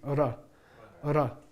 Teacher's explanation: they are a result of a trilling of the tongue behind on the palate which ruffles have ridges you see ora ora you don't touch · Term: Spanish ours are rolled